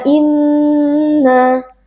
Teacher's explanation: Nun yang bertasdid kita membacanya dengan gunah yang dipanjangkan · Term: gunnah yang dipanjangkan